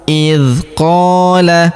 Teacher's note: Huruf qa kita panjangkan 2 harokat karena terdapat alif di depannya.